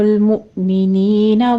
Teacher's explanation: حمزہ کو تھوڑا سا جھٹکا کے ساتھ ہم ادا کریں گے، آگے یا مدہ ہے، 2 کاؤنٹ کر لیں گے۔